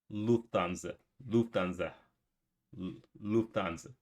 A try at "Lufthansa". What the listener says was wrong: In English, people usually say Lufthansa, but in German, we say Lufthansa. So the emphasis is on the first.